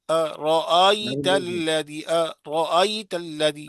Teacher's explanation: حمزہ میں شروع میں جھٹکا دیں گے ہلکا سا، نرمی سے ادا کرو نا اس کو